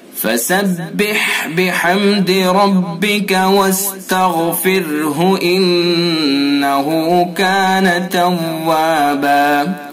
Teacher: فسبح ہا کو حلق سے ادا کریں گے، بحمد ربک را کو پر کریں گے، واستغفرہ غین کو پر کریں گے، انہو ان غنہ کریں گے یعنی کلف کے برابر ناک میں رکیں گے